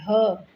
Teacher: ह को हम काकल्य वर्ण करते हैं। इसका ग्रसनी से उच्चारित होता है ह।